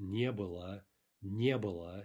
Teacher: Note the stress is on the не there